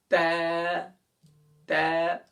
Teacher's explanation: یہاں سے زبان کی نوک کو ثنایا علیہ کی جڑ، یعنی اس کی بالکل بیک، جہاں سے دانت شروع ہو رہا ہے، اس کی جو اوپر کا حصہ ہے گم کا، وہاں پر آپ نے اس کی جڑ پر زبان کی نوک لگانی ہے۔ Tip of the tongue and the roots of upper front teeth, یعنی کہ آپ نے زبان کی نوک کو اوپر کے دانتوں کی جڑ پر لگانا ہے۔ · تا کا مخرج بہت آسان ہے، زبان کی نوک اور ثنایا علیہ، اوپر کے جو 2 دانت ہیں بڑے والے، ان کو کہتے ہیں ثنایا علیہ۔